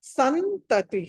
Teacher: సా తర్వాత అనుస్వారం వస్తుంది. దాని తర్వాత త ఉంది కాబట్టి ఇది నాగా పలకాలి